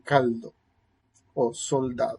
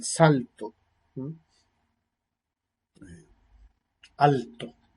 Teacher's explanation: se asimila o se acomoda al punto de articulación de la post dental antes de que conoce a una labor dental la lateral se